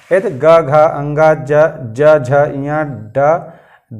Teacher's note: लेकिन कुछ वर्ण ऐसे हैं जिनका उच्चारण करने पर एक कंठ के अंदर जो स्वर यंत्र लगे हैं उनमें कंपन होता है, नाद होता है। तो जिन वर्णों के उच्चारण में स्वर यंत्र में नाद होता है यानी कि कंपन होता है, उन्हें हम सघोष व्यंजन कहते हैं